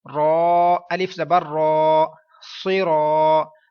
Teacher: اب را کے اوپر زبر پیش آتی ہے تو را پور ہوگا، اور اب الف ہے، الف سے پہلے اب را پور ہے تو الف بھی پورا موٹی آواز میں پڑھا جائے گا